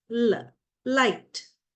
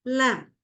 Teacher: air is blocked by the tip of the tongue but the air escapes through the sides of the tongue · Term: lateral sound